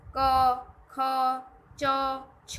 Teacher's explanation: અઘોષ ધ્વનિ એટલે કે નાદતંત્રી મહદ અંશે અલ્પ માત્રામાં કંપે ને જે ધ્વનિ ઉત્પન્ન થાય તે અઘોષ ધ્વનિ.